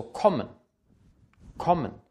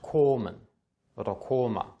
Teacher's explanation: Ein geschlossenes, kurzes O vor einem Doppelkonsonanten.